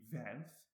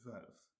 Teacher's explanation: If you try not then to move anything else while you're rounding your lips, and then if you were to do it with unrounded lips, it'd be velf, and then when you do it with rounded lips, it's velf